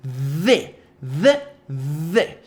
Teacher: Nesse padrão de pronúncia você vai reproduzir o Z, som de Z com a língua presa. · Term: TH voiced